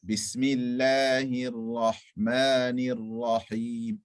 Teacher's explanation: Rahman, Rahim, the Ra is full mouth.